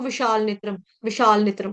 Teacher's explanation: ने के ऊपर आधा त आएगा मतलब आघात आएगा क्यों क्योंकि आगे त्र संयुक्त वर्ण आ रहा है